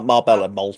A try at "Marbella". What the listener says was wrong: Marbella, you don't say the L's. Marbella.